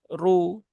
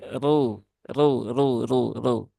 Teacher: ra yang berharakat damah dia dibaca dengan tafkhim ya dibaca dengan tafhim dibaca dengan tebal ya dibaca dengan ngangkat pangkal lidah